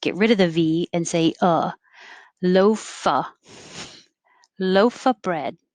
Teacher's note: because the next word after of starts with a b a consonant it won't connect so we can just get rid of the v